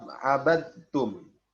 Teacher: Ya, pada lafaz abadtum memasukkan huruf dal ke dalam huruf ta secara utuh, sempurna. Jadi dal tidak dibaca lagi, langsung dibaca ke huruf ta. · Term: idgham kamil